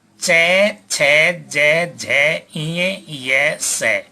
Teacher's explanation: इनका उच्चारण तालु से होने के कारण ये तालव्य कहलाते हैं